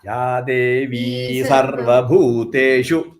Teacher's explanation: Again, Bhuteshu you should not elongate. It is Hrasvam, short.